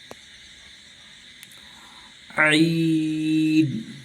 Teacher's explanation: عین جو ہے یہ بیچ حلق سے ادا ہوتی ہے